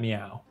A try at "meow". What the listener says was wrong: Nope. No good. Nope. One more. It's gotta be higher pitched.